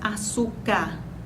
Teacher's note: o fonema r a letra R cai no final dessa palavra na pronúncia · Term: queda do fonema